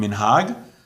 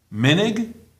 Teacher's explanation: Sephardi pronunciation, emphasis on the last syllable. Minig, Ashkenazi pronunciation, accent on the second last syllable.